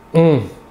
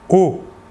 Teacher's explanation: L'air sortira entièrement par la bouche. Alors que pour le ON, l'air sortira par le nez.